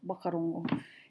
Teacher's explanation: In Taranaki, they drop the H sound, so they pronounce it wakarongo.